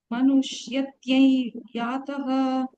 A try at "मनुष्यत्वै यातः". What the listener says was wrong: Tyai, I'm saying twai.